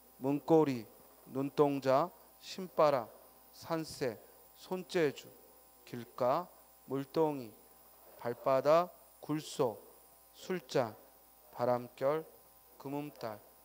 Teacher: 된 소리를 내서 사이소리 현상으로 발음해야 돼.